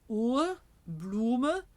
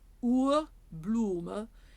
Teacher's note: long close ooh as in in English food or blue in German again lifted higher